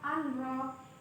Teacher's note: Kemudian pada lafal anro yang dibacanya langsung masuk ke huruf ro dinamakan dengan hukum bacaan idgham bila guna